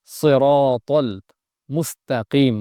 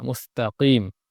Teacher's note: ইহদিনাস সিরা, এখানে সিরা, এই শব্দটা সদ আছে, এরপর আছে র, এরপরে ত, প্রত্যেকটাই মোটা হবে, মুখ ভর্তি হয়ে আওয়াজ হবে, সিরাতাল মুস্তাকিম, মুস্ত হবে না, মুস্তাকিম, তা তাজবরতা।